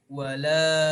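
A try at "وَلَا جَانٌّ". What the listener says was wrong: La-nya dipendekkan lagi. Jadi terlalu panjang. Wala jannu.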